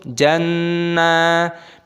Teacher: Nun tasdid ghunnah berdengung dan dipanjangkan nunnya.